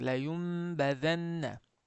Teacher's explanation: Nunni nligicha emasda m ga aylantirib g'unna qilib o'qiysiz. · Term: iqlob